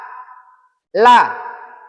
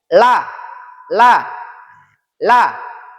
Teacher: makhrajnya atau tempat keluarnya adalah di ujung lidah